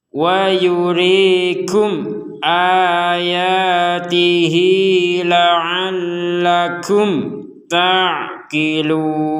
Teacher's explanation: harokat kasrohnya ini kita panjangkan 2 harokat ketika gabung dengan la'alla ini.